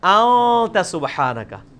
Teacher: اخفا اسے کہتے ہیں کہ خفی کر کے پڑھ رہے ہیں، نون پورا واضح نہیں کر رہے